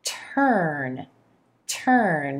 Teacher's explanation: day try this word turn turn we've got our T consonant with the tip of the tongue tapping gently against the alveolar Ridge or that boney Ridge right behind the top front teeth going straight into that sound tur tur adding then the consonant